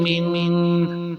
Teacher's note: آگے میم پر کسرہ ہے اور نون ساکن ہے، اور نون ساکن کے بعد حروف حلقی میں سے کوئی نہیں ہے تو اس پر غنہ بھی ہوگا